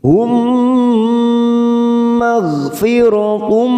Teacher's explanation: mim sukun bertemu mim, namanya bacaan idgham mimi. Kita tekan selama 3 ketuk, siap masuk pada huruf mim.